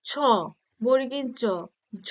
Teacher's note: যখন উচ্চারণ করছি আমরা জীবটা উপরের মধ্যভাগের তালুতে গিয়ে স্পর্শ করছে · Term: তালব্য ধ্বনি